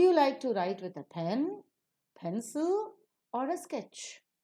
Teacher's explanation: For sketch, we fall down. Pen, we rise. Pencil, we rise.